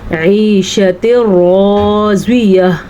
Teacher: हम रा को पुर पढ़ेंगे और ज़्वाद को भी पुर पढ़ेंगे, क्योंकि ज़्वाद उन हरूफ में शामिल है जिनको पुर पढ़ा जाता है। · राज़ियह कहते हुए आखिर में हा की आवाज़ भी ज़रूर आनी चाहिए